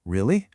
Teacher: If I say it with an upward pitch at the end, like really, I'm conveying genuine surprise.